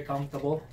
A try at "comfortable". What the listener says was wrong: How can you pronounce it comfortable if you're not pronouncing the R-O? Comfortable. See, you need to pronounce the R and O. You spell it R-O-F. R-O. So where is the R-O? You read it comfortable.